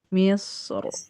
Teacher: Yang Misro mah dia dibaca tebal ketika waqaf.